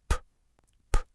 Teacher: It's totally quiet, just a little puff of air.